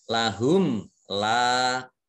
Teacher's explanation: ketemu dengan huruf lam dibaca jelas, bacaan izhar syafawi